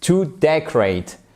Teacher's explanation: Vous avez l'accentuation, même s'il se ressemble beaucoup, même si c'est le nom et le verbe, sur la première syllabe qui est ici, sur cette partie.